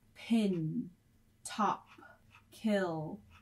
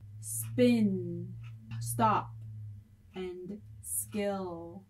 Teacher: You should feel the puff of air hitting your hand when you say pin, top, and kill. However, you will not feel a puff of air when you say spin, stop, and skill. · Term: Aspiration